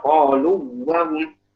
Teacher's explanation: Karena di situ qalu waw, di situ waw madiyah. Sementara wahum di situ wa'nya adalah wa yang di syafatan. Jadi syafatan yang di dua bibir. Berbeda makhraj seperti itu.